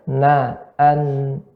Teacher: na itu dari ujung lidah saja.